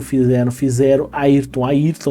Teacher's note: todas são palavras que cuja sílaba final é nasal e essa nasalidade se perde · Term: des nasalização